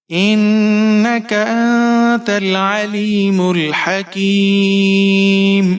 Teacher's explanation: काफ के नीचे जीर है, या साकिन है और यहाँ पर आप वक्फ कर रहे हैं तो मद्दे आरिज करेंगे। इन्नका अंतल अलीमुल हकीम 4 से 5 सेकंड तक आप इसे खींच कर पढ़ेंगे।